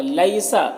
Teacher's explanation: لئی میں یالین سے نرم آواز کے ساتھ جلد پڑھیں گے